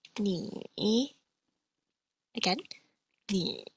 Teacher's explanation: my tone drops from about just slightly below medium pitch, and then rises to just slightly above medium pitch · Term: third tone